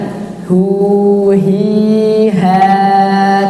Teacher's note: huruf H itu makhrajnya di tenggorokan bawah, bukan di dada.